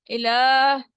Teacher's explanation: الہ لام کے اوپر کھڑی زبر ہے تو یہ 2 کاؤنٹ اسٹریچ ہوگا